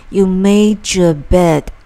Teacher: 这个句子中▁made▁和▁your▁做了连读处理，两个单词之间加了个举的音